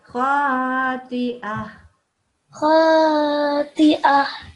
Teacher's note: you've turned the ta marbuta into a ha sound with the sukoons, and that's exactly what you're supposed to do.